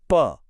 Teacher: आपके दोनों होंठ आपस में चिपक जाएंगे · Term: प वर्ग